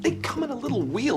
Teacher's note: the M sound from come links to the next vowel